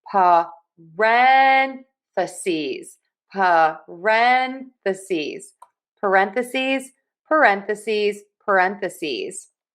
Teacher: So we are going to stress syllable number 2. Also, that S on the end really confuses some people. We are going to pronounce that with a Z sound.